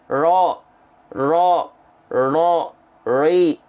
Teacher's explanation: Tapi jangan sampai karena takut getarannya terlalu banyak, terlalu berlebihan, banyak orang melafalkan ro jadi hilang getarannya